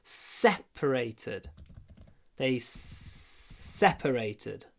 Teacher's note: Ударение на первом слоге, и поэтому мы говорим separated.